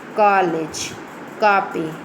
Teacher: आ का उच्चारण आ और ओ के मध्य की ध्वनि से होता है.